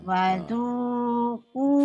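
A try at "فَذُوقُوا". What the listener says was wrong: Fa bukan wa, fa.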